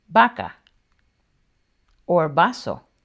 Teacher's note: the B and the V are interchangeable. When we're just speaking naturally, they just sound the same. So you can just pronounce it the same, like in vaca or vaso.